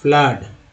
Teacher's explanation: फ्लड में double O का उच्चारण जो है आ के रूप में